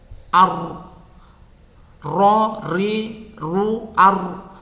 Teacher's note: Ujung lidah agak ke dalam mengenai gusi gigi seri pertama. · Ketika kita mengucapkan ro-nya dalam keadaan sukun, maka nafasnya atau udara itu tidak mengalir keluar mulut. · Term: jahar